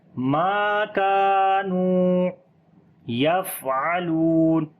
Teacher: فا کے اوپر صفت ہمس کریں گے، سانس کو جاری کریں گے، عین کو گلے کے درمیان والے حصے سے پڑھیں گے، لام کو لمبا کریں گے، واو مدہ ہے.